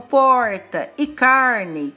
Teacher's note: No interior de São Paulo, palavras como porta e carne, com esse R bem puxado, chamado R retroflexo